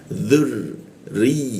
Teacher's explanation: posisi ro ujung lidah di bawah hidung